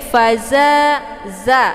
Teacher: za ini dibaca panjang 2 harokat karena ada alif sebelumnya harokat fathah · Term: mat tabi'i zahiri